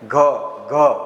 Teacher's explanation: તમે આ ઘ બોલો, ગણપતિનો ઘ બોલો અને ઘરનો ઘ બોલો, તો કંપન વધારે થાય છે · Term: ઘોષ વ્યંજન, ઘોષ